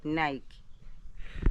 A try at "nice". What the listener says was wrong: No, why are you saying Nike? nice. Nice. Nice. Hey, I came to realize my grandma can't pronounce the word nice. She pronounced Nike. Okay, say nice. Nice. Nice. Nice. I'm nice. Nice.